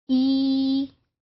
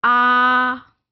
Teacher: E के साथ आपकी जो टंग की पोजीशन है वो कहीं ऊपर है, whereas जब आप कहते हैं आ तो वो टंग की पोजीशन नीचे है